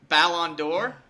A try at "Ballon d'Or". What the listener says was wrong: Yeah, the Ballon d'Or. You're close. You were calling it like balloon. Ballon.